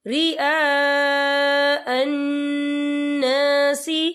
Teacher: والذین ينفقون اموالہم رئاء الناس، یہ دیکھیں رئاء یہاں خالد سے پہلے زبر ہے اور اس پر مد بھی ہے۔ یہ مد جو ہے مد متصل ہے، اس کی مقدار 4 حرکت کے برابر ہے، تو ہم اسے 4 حرکت کے برابر کھینچ کے پڑھیں گے